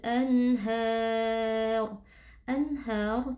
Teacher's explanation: yang bertemu dengan huruf ha hukumnya adalah izhar halqi cara membacanya nun sukun dibaca jelas tanpa berdengung